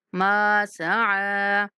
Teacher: میم کو بھی ایک سیکنڈ تک کھینچنا ہے، سعی عین کو بھی کھینچنا ہے